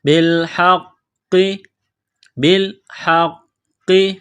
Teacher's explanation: قاف میں سختی کرنی ہے قاف کو موٹا کرنا ہے